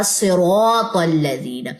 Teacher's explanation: صاد زیر کے ساتھ ہے پھر بھی یہ موٹا ہی پڑا جائے گا